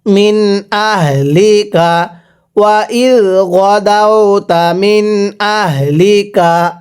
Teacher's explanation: নুন সাকিনের পরে হামজাটা ইজহার হরফ এজন্য এখানে নুন সাকিনটা স্পষ্ট করে পড়তে হবে